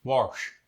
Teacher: The ASH sound, as in wash, gets an R thrown in there.